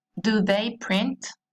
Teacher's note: Y acá es importante destacar que a la hora de pronunciar, la entonación va hacia arriba